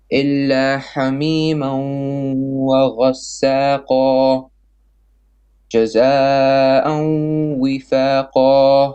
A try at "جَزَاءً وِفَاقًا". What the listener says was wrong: Longer on the mud.